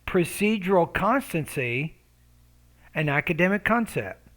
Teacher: You need to have a longer pause. Your tone before the pause should go up slightly.